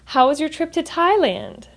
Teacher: So when my friend asked me, "How was your trip to Thailand?" How was your trip to Thailand? There's a falling intonation at the end because that is an open-ended question. How? How is asking me for more than just a yes or no.